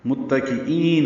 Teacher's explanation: ای یا مدہ ہے، 2 حرکات لمبا ہے